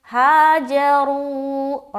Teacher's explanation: تو یہاں پر ہم واو مدہ کر رہے ہیں، ہاجروا، را کو موٹا رکھتے ہوئے واو مدہ کیا